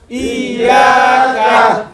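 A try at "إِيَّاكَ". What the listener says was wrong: Iyyaka na I ekhane tashdid ache dhakka hobe ekta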